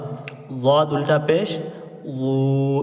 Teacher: द की आवाज यहां जबान की करवट और ऊपर के मसूड़े से निकलती है